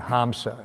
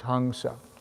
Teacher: an M with the visarga on top is pronounced as NG. So kang, so it's like hangsa.